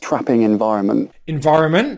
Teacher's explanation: he goes into the t sound but doesn't release it